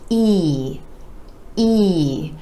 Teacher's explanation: The sides of the lips retract just a bit for this sound, and you want to give it more stretch, more duration, and a little more energy.